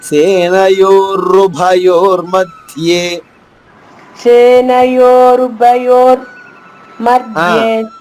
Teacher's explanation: ఆ రు పూర్ణంగా పలకాలి పూర్ణక్షరం